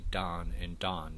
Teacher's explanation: they have merged the vowels before nasal